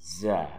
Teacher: Ada bunyi angin kencang atau safir.